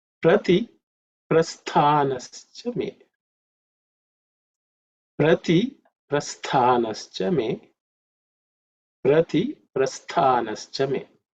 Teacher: In terms of pronunciation, the word stha, the tha is an aspirated letter, which is the second letter in the tha varga. So it has to be aspirated with some extra air.